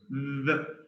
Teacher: So it's the sound is voiced dental. Voiced dental.